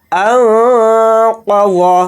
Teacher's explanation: قاف کو یہاں پر جلدی پڑھیں گے اور قاف کو موٹا یعنی پر پڑھیں گے منہ بھر کے · نون کی آواز کو ناک میں چھپا کر اخفا کے ساتھ پڑھیں گے